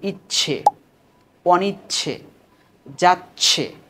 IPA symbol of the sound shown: ʧ